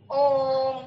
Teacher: तो उसमें मतलब ओम हम लिखते हैं ना, ओम, तो 3 मात्रा तक, जो ओ को 3 मात्रा तक आगे बढ़ाने के बाद म का उच्चारण अगर हम करेंगे तो वह प्लुत स्वर कहलाया